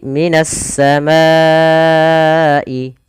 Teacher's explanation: ke huruf syin maka juga bisa dikenal dengan idgam Syamsiyah yaitu Alif lamnya diidgamkan ke huruf Sin maka menjadi minasamaaiai